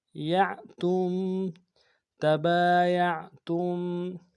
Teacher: تا کو میم ساکن کے سامنے لانا، میم ساکن میں غنہ کریں گے